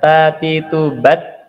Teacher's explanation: sifat berdesis Nah berdesis itu artinya melepaskan ee nafas gitu ya nafasnya tidak boleh ditahan nafasnya terlepas